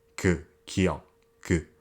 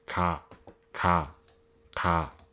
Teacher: Kiok has the sound that you make when you block your throat, which sounds kind of like a mix between a G and a K sound.